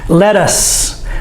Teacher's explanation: This TT does not make the D sound. We say it with the T sound.